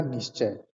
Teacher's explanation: तो यहाँ पर जो विसर्ग है, विसर्ग के स्थान पर जो तालव्य स है, यानी जिसको हम बड़ा स कहते हैं, ये आ जा रहा है विसर्ग के स्थान पर और फिर च जुड़ जा रहा है